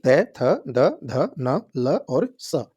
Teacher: थ द ध न ल और स ये होते हैं दत जब आप इनका उच्चारण करेंगे तो जीभ जो हमारी है वो दांतों से टकराए गी इसलिए इनको दंत व्यंजन कहते हैं